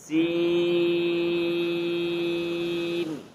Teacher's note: سین کی آواز کو ناک میں نہیں لے کر جانا، سین کو اگر آپ سین پڑھیں گے تو یہ غلط ہو جائے گا۔